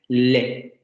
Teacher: Con este no deberíamos tener ningún problema porque es el mismo que tenemos en español, es el mismo que tenemos en inglés, etc. Aproximante lateral quiere decir que el aire va a salir por los lados de la lengua. Alveolar quiere decir que la punta de la lengua se va a pegar a los alvéolos y va a haber vibración de cuerdas vocales, ¿no? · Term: alveolar aproximante lateral sonoro